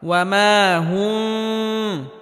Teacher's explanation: আর বাকি কোনো জায়গায় গুন্না হবে না স্পষ্ট করে পড়তে হবে অর্থাৎ মিমে হালকা আওয়াজ জারি রেখে উচ্চারণ করতে হবে তবে গুন্নাহ করা যাবে না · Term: মিম সাকিন